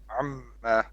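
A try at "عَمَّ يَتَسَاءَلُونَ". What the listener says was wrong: Amma. Don't put like a vowel on the a mad on the ma. It's amma. Amma yatasaalun, not amma.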